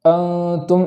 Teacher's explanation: سے ادا نہ ہوگا، جیسے انتم ایسا نہیں پڑھیں گے، انتم زبان مخرج سے جدا رہے گی اور گنہ خیشم سے ادا ہوگا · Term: اخفاء